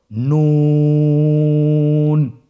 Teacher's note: নুন হরফটির উচ্চারণ স্থান হচ্ছে জিহ্বার আগা তার বরাবর উপরে তালুর সঙ্গে লাগিয়ে উচ্চারিত হয়।